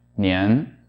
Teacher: The standard way that you should pronounce this is to have the second tone be a smoothly rising tone throughout the sound, and to have the vowel transition be nice and smooth as well. · First, there's the vowel change from e to e, and secondly, there's the pitch change from low to high · the vowel transition is actually going to get quicker and going to be pushed towards the beginning of the sound